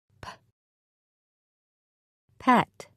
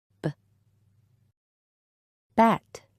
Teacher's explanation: The first sound in each word is made in exactly the same way, except one is voiceless and the other is voiced.